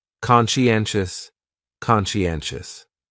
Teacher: conscientious has 4 syllables, and the stress is on that third syllable